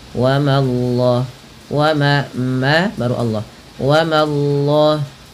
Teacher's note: langsung Allahnya tebal tapi memanya tipis